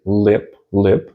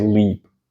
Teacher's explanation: when you say Lip lip the L is much harder than when you say leap